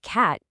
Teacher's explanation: at the end of a word like cat, you might not even release the air at all